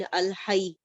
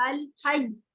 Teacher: ऐसे या के ऊपर थोड़ा सा नबर भी करेंगे, आवाज थोड़ी रेज कर